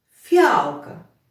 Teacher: в другому слові в слові фіалка звук ф м'який